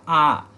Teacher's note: तो आ करेंगे तो सबसे ज्यादा मुंह खुलेगा। तो विव्रत का मतलब ही होता है व्रत के जैसा मुंह बना लो, आ कर लो, आ।